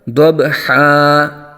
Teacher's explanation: اگر وقف کریں گے تو دو زبر کی تنوین کو الف سے بدل دیتے ہیں، یہ قاعدہ ہے اس کا۔